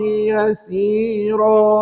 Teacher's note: Kalau wakaf dia tak jadi tanwin lagi dah tuan. Dia jadi baris satu je pada yasira.